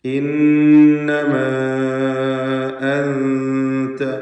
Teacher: ഇന്നമാ അൻത, വീണ്ടും മദ് മുൻഫസിൽ ജായിസ്, അലിഫിന് 4-5 ഹറക്കത്തിൻ്റെ അളവിൽ ദീർഘം നൽകുക. ശേഷം ഹംസ അടുത്ത പദത്തിൻ്റെ ആരംഭത്തിൽ വന്നതാണ് കാരണം.